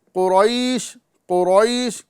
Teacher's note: قاف کو بھی پر کرنا ہے اور را کو بھی پر کرنا ہے